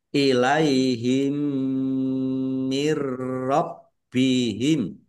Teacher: Mendengung mim ditandai mimnya ada tasdid. Dibaca gunnah atau mendengung ditahan biar tampak mendengungnya. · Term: idgham mimi